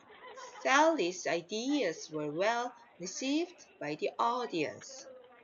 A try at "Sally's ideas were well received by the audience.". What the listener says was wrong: Okay, don't pause. Don't pause here. Do not pause in between. So, well received. Well received by the audience.